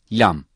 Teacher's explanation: lam dil ucunun iki yanı üst ön dişlerin etlerine dokunması ile çöker ince ve hafif bir şekilde okunur